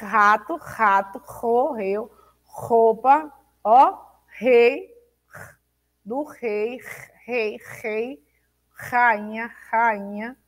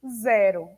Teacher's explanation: No meio, entre as vogais, eu começo a tremer e fico fraco